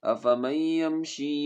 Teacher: یہ نون پڑھا نہیں جائے گا، میم کو یا کے ساتھ ملائیں گے